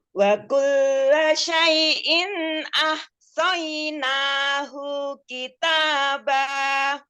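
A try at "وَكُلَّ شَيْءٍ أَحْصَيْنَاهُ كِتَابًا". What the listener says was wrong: Nanya sudah benar, hunya tidak panjang. Jadi kalimatnya ahsainahu kitaba. Nanya yang panjang, hunya.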